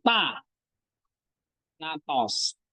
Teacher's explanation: Tanda itu nadanya naik, pitch-nya went up tapi sedikit ya. · berarti waktu kamu ngomong tanatos an-nya naik tinggi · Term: acute